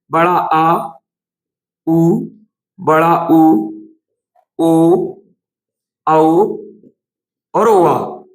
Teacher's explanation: ये जीभ के पीछे वाले हिस्से से निकलने वाले स्वर है। तो जीभ के 3 जगह से जो है स्वर निकलते हैं, अग्र स्वर, मध्य स्वर और पश्च स्वर।